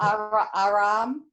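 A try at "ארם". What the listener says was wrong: That's correct.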